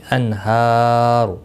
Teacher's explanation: ہا کے اوپر کھڑی زبر ہے، ایک الف کی مقدار کے برابر کھینچ کر پڑھیں گے اور را پیش کی وجہ سے پر پڑھا جائے گا · نون ساکن کے بعد حرف حلقی کا ہا آیا ہے، اظہار حلقی ہوگا، یہاں گناہ نہیں ہوگا۔